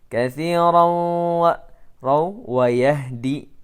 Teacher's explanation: tanwin fathah bertemu dengan waw maka didghamkan, idgham bi gunna